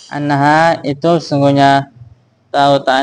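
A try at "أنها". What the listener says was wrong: Tuh perhatikan lagi itu annaha bukan innaha. Kenapa anna? Karena jumlahnya annaha sakinatun itu menjadi khobar.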